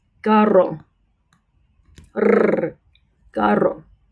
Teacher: Also, if you have two R's together, carro, carro. So an initial R or double R has a trilled sound.